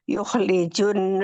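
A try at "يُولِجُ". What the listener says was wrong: Bukan yuh, bukan yuh. Yu panjang.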